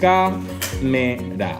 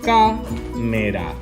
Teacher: Vegem que la síl·laba tònica està en la avantpenúltima síl·laba. Càmera. Aleshores, com totes les esdrúixoles s'accentuen, i l'accent en la A és obert, deguem posar l'accent obert damunt de la A, de càmera.